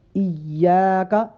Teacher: ہے، یا مشدد ہے، لہذا یا کو سختی کے ساتھ ایاک، تشدید بھی ہے اور یا الف مدہ بھی ہے، اس لیے یا کو تھوڑا لمبا بھی کریں